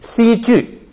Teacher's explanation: 碰到第二音节呢，变成不送气，就变成鸡，而且它还要变成平声